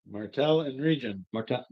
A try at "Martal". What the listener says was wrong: Martel. Not Martel, but with an A. Martal.